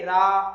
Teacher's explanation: तो रा का उच्चारण स्थान क्या है? मूर्धा है, मूर्धा के स्पर्श करके रा ऐसा हो गया, वो चला गया, अब वो रा नहीं है।